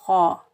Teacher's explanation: ख़ा की आवाज़ जो होती है वो खुरदरी होती है, ख़ा भी हरूफ मुस्ताइला में से है तो इन तीनों को हम मोटा अदा करेंगे, इन तीनों को हम मोटा पढ़ेंगे।